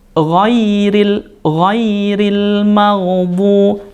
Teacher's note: Nah, di sini ada huruf dhad. Huruf dhad ini makhrajnya adalah pinggir lidah, kemudian dia bertemu dengan geraham atas